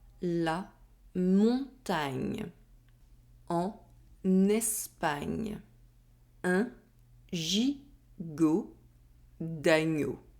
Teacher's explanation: the back of my tongue is against the roof of my mouth and I remove it in one go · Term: nasal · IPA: [ɲ]